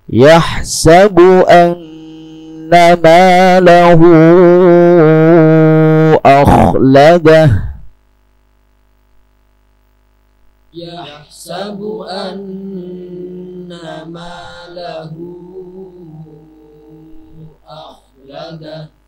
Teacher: bacaannya sama dengan mad jaiz munfasil empat atau maksimal lima harakat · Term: mad silah thawilah